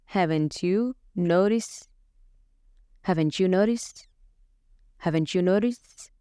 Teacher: markii eray uu ku dhammaanayo xarafka T, ereyga ku xigana ku bilaabanayo xarafka Y ama codka ya. waxaa ka dhexdhacayo linking, waa laisku xirayaa ama laisku qabanayaa. waxaa ka dhashanaya codkan ama waxaa loo maqlayaa sida tan sha sha, ch sound, codka ch.